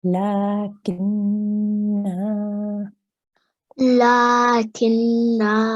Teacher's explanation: So the noon has a shadda, well done. So you hold that for 2 seconds, noon guna.